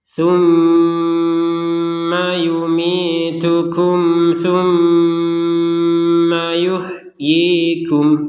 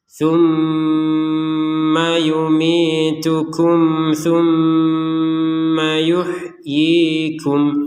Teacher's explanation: Ada mim bertasydid, kita dengungkan 100%, ya sekitar 2 harokat lah panjangnya.